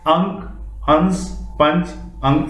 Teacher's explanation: अनुस्वार के उच्चारण में नाक से अधिक सांस निकलती है और मुख से कम सांस निकलती है